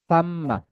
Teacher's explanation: সাম্মা, সা একেবারে পাতলা করে, সাম্মা, ঠিক আছে? সিসি আওয়াজ হবে না, সিনে সাদে যেমন হয় এমনটা হবে না কিন্তু